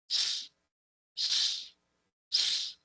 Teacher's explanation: If you touch your throat, you are not going to feel vibration. There is going to be sound. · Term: lack of vibration